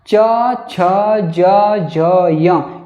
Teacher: ये जो आपकी जीभ हैं वो दांत के पिछले वाले भाग तालु को स्पर्श करती है, तालु के स्थान को स्पर्श करती है, उसको छू रही है।